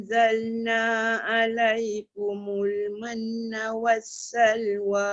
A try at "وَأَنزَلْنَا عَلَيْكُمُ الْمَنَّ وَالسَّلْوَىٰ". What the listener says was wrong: Tak cukup. Manna was. Mesti kena 2 harakat juga dengung dia.